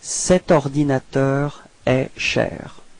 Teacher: actually no pause, no break between the set and ordinateur